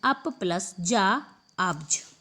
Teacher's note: पा तीसरे वर्ण से मिलने के कारण पा अपने ही वर्ग के तीसरे वर्ण यानी कि बा में बदल जाएगा